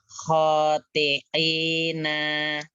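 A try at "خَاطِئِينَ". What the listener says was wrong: Nanya pendek, i-nya yang panjang itu hamzah ya, bukan ain. Khoti'ina.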